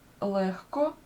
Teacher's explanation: коли дзвінкий вимовляється перед глухим він оглушується